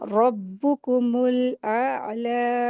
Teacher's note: आइन हरूफ हलकी है तो हलक से अदा करेंगे इसको और फिर लाम के साथ अलिफ अलिफ जो है खड़ा ज़बर लगा है तो इसको दो हरकत खींच के पढ़ेंगे।